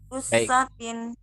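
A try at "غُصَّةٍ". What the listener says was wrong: Bukan sa, so.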